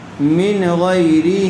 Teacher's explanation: نون کو ظاہر کر کے بغیر غنّے کے جلد پڑھیں گے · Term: اظہار